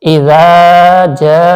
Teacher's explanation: إذا جاء، زال کو نرمی سے اور تھوڑا سا کھینچ کے پڑھیں گے کیونکہ الف سے پہلے زبر ہے، حرف مدہ ہے، تو الف سے پہلے زبر ہو تو وہاں پر تھوڑا سا کھینچ کر پڑھا جاتا ہے، اور زال کو نرمی سے بھی ادا کرنا ہے۔ اس طرح جیم کے آگے الف بھی ہے زبر کے آگے اور اس پر مد بھی ہے، تو اس کو کچھ سیکنڈ کے لیے آپ کھینچ کے رکھیں گے آواز کو، اور اسی طریقے سے یہ جو حمزہ زبر ہے اس کو بالکل بھی نہیں کھینچنا۔